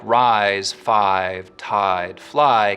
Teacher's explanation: But words like rise, five, tide, fly keep their full I diphthong